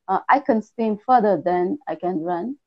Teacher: Can is unstressed. Yes. So it becomes kun.